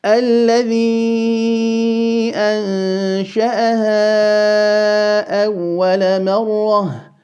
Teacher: The mad on الذي will be 4 vowel counts because of the hamza following it. · the noon followed by the sheen, we will implement al-ikhfa or concealment.